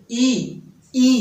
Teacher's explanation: वर्णमाला की जो ई है उनका उच्चारण तालव्य से होता है